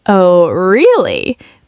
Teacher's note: Playful, rising and falling tone. You're not doubting them, you're just enjoying the compliment and flirting back. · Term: flirty really